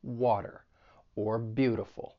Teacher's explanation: You're going to use a flap T when the T comes between two vowels. And a flap T sounds more like a soft D